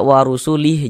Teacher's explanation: Huruf H tidak dibaca panjang, jadi kami membuatnya menjadi sukun.